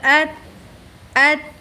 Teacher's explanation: جیسے حمزہ تا زبر ات، ات، اس کو اپنے مخرج میں روک دیا۔ سکنا ساکن، بالکل روک دیا، ہلائیں گے نہیں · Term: جزم